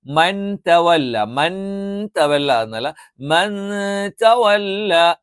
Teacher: സുക്കൂനുള്ള നൂനിനു ശേഷം താ വന്നാൽ അവിടെയുള്ള ഉച്ചാരണം ഇഫാ നൂനിന് അവ്യക്തമായി മതവല്ലമതവല്ലമതവല്ല നൂനിനഒന്ന് അവ്യക്തമാക്കി ഉച്ചരിക്കും ഇല്ലമതവല്ലവർ അപ് ഇവിടെ തവല്ലവഫർ വാവ് തെറ്റിക്കരുത് വാവ്